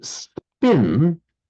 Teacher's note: So if you can just feel, if you say, native English speakers here, if you say the word pin, just put the back of your hand under your mouth, pin, you can feel a puff of breath, pin. But if you say spin, there's not such a puff of breath there.